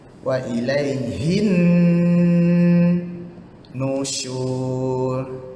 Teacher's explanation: Alif lam samsiah satu hal dan berjumpa pula dengan nun sabdu. Berdengunglah dia.